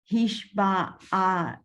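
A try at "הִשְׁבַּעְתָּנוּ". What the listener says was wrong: This one's silent. The ayin silent.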